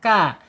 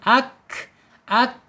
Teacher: makhrajnya ada di alisan yaitu ujung lidah menyentuh langit-langit yang berdaging ka. Kemudian secara sifat alhams ketika dia sukun ak ak ak ya alirkan ya alirkan napas kita.